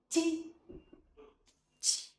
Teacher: Step two, release waste air. Build up air pressure, then release with a strong puff of air. Your vocal cords do not vibrate. · Put your hand in front of your mouth. When you say t, you should feel a strong burst of air on your hand. · Put your tongue tip down behind your lower front teeth. Raise the front of your tongue to touch the hard palate. Step 2. Release with air. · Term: consonant qi